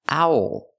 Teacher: it's to sound Ow like how and now plus the dark L ow owl this is an owl it's a kind of bird